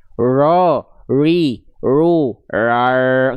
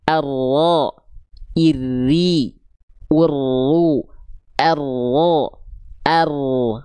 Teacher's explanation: Tapi tetap ada getarannya. Ro, sedikit tapi jelas getarannya.